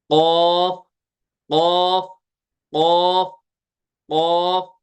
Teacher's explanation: वो लटकता रहता है हैंगिंग मास तो वहां से वहां से जुबान की जड़ जो है ना यह लगेगी ताल के नरम हिस्से के साथ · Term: पुर क